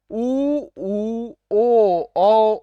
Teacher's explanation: ओठों का आकार वृत्त के समान गोल हो जाए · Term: वृत्ताकार स्वर